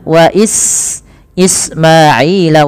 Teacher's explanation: alirkan nafas pada lafal sin dan jangan sampai terubah dengan baca wa is dengan sin, dengan sa atau dengan shin, atau dibaca wa Ismaila.